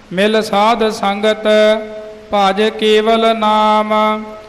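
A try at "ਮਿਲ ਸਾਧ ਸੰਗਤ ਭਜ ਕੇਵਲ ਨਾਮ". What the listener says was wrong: पाठ मिल साध संगत भज भज जोर कस के नहीं बोलना, हाँ अदक नहीं लाना। मिल साध संगत भज केवल नाम, कई भज जोर के कस के बोलते वो नहीं।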